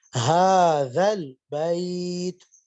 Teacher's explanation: ہا کو کھردری ہا ہے یہ لاہور والی، اس لیے اس کو سینے سے ادا کریں گے